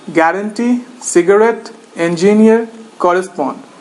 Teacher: Word stressed on the third syllable.